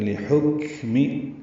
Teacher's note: میم کی زیر کو معروف طریقے سے جلدی ادا کریں گے